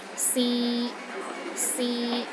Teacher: the third tone is a mid tone it's pronounced in the middle of your range and it is steady